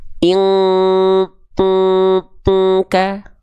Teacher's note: kalau ketemu Kaf dengungannya kuat mendekati Eng